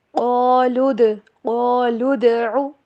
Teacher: قاف کے ساتھ الف بھی پر کر کے پڑھا جائے گا، موٹا کر کے پڑھا جائے گا، اور دال کے اوپر ہوگا کلکلا۔ قالوا ادع، عین کی آواز کلیئر، اس کو او نہیں پڑھنا